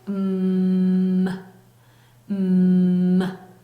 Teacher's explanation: 울리고 있죠. 그래서 유지되는 울리는 소리 m입니다